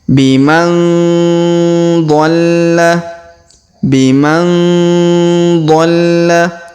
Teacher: Perhatikan huruf nun sukun bertemu dha, maka kita dengungkan dan kita samarkan.